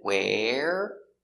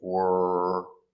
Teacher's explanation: Remember the pronunciation? Where is open, where, and were is closed, were. The voice comes from here, were.